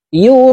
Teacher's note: এই র কে 4 আলিফ টেনে পড়তে হবে